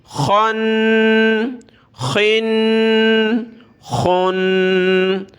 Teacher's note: خا کو بھی موٹا کر کے پڑھنا ہے، گلے سے نکالیں گے۔